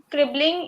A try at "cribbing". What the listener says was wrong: It still remains as cribbing, not cribbling. The ing form will be cribbing.